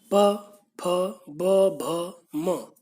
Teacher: दोनों होठ आपके मिलते हैं। इन वर्णों को बोलते समय यदि आपके होठ नहीं मिलते तो आप इनका स्पष्ट उच्चारण भी नहीं कर सकते, आपका सिर्फ अ का स्वर निकलेगा।